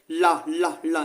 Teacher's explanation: ल को पार्श्विक वर्ण बोलते हैं